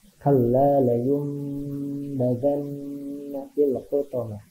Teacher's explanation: Jadi ketika ada nun mati atau tanwin menghadapi huruf ba, maka membacanya jadi huruf mim. Kalla la yumbadanna fil hutamah. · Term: iqlab